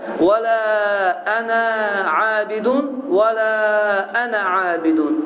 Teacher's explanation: Deməli, bu işarəni harada görsəniz, qardaşlar, belə bir yumru işarəni, bilin ki, orada uzatmırsan, yəni iki hərəkə miqdarını uzatmırsan və açıq bir şəkildə ənə deyə tələffüz edirsən